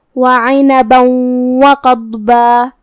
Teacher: پڑھنا ہے، جو کہ ضاد بھی حروف التفخیم میں سے ہے، تو ہم قاف کو اور ضاد کو دونوں کو تفخیم سے مطلب بھاری آواز میں پڑھیں گے · الواو ہے کلمت وقضبا میں، یہاں حکم ہے ادغام بغنہ، تو ہمیں یہ تنوین کو واو میں ملا کے غنہ اور تشدید کے ساتھ یہ حکم کو ادا کرنا ہے